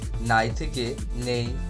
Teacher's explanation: পরবর্তী স্বরধ্বনির প্রভাবে পূর্ববর্তী স্বর পরিবর্তিত হয়ে একই রকম বা কাছাকাছি স্বরধ্বনিতে রূপান্তরিত হয়। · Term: পরাগত স্বরসঙ্গতি